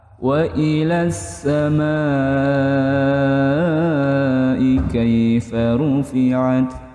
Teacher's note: Hukumnya alif lam syamsiyah. Nih langsung masuk dia, alif lamnya enggak kebaca kalau alif lam syamsiyah. Ilas sama, langsung masuk huruf sa.